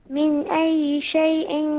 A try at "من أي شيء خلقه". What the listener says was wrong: من أي شيء خلقه؟ هنا التنوين مع الخاء ما حكمها؟ شيء خلق غلط، شيء خلق هكذا، شيء خلق ما في غنى.